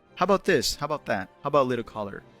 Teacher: So he drops the T and the schwa sound is reduced.